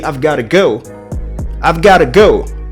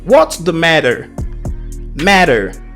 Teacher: saying here is about american english so you will see that letter t will be converted to d ta will sound da in most cases